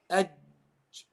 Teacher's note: Whereas jim, the contact is across the tongue, across the entire tongue. Okay, so across the entire tongue, and what happens is the sound stops. Okay, the airflow stops, like aj, and then you have to release, aj, you have to release. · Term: qalqala